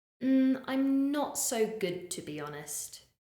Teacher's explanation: the more negative responses I'm not so good to be honest we have that falling intonation